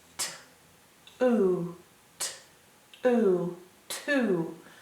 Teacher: It sounds like two. You don't even hear the W. You just hear the T and the oo.